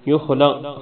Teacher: خا کو موٹا پڑھیں گے، کاف کو موٹا پڑھیں گے